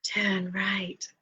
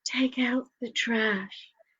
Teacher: the sat nav tells you to do something and it sort of says turn right in this breathy voice